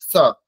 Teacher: দন্ত স উচ্চারণ স্থান দন্ত, সেই জন্য এর উচ্চারণ দাঁতে করতে হবে, জিহ্বা দাঁতকে স্পর্শ করবে